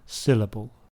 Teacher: the word syllable has 3 syllables and the stress is on the first one